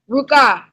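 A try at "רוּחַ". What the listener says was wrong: In chapter 3, this is called an odd vowel. Because whenever that vowel that makes an ah sound is underneath the ket at the end of a word, it don't make a ka sound, it make an ak sound.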